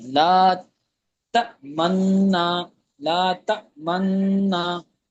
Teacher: تھوڑا سا دمہ کی طرف اشارہ کرنا ہے تو اسی کو اشمام کہتے ہیں